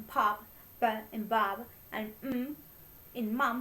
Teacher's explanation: sounds which are made up with both lips